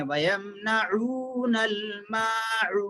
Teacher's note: عین و پیش عو مد ہے، کھینچ کے پڑھنا ہے